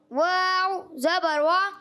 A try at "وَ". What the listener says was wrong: اب بھی موٹا ہو رہا ہے. واو زبر وا.